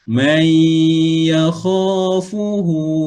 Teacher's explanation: nun mati bertemu huruf ya, idgham ma'al gunnah